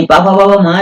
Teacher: पवर्ग के यानी पापा बाबा माँ जो है, इनको भी बोलते समय हमारे ओंठ बंद हो जाते हैं, अर्थात ये ओष्ठ व्यंजन वर्ण कहलाते हैं